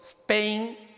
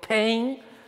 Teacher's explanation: si yo digo spain no tiene aspiración pero sí digo pain está aspirada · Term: p aspirada